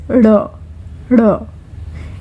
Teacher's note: it is a hard consonant, and it will be pronounced by curling your tongue at the back of your mouth, near your teeth, and it is a sound which is closer to D.